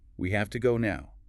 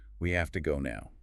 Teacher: That have to sound blends the two words, making it quicker and more efficient. Smoother flow.